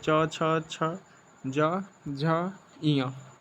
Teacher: दूसरा है तालव्य व्यंजन। यह च से लेकर ञ तक होते हैं और तालु प्लस जीभ के बोले जाते हैं। आपको इस डायग्राम में दिखाया गया होगा और इसे इसे च वर्ग कहते हैं।